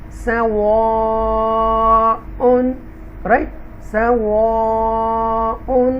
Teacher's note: سواء ہونٹ گول ہوں گے یہاں پر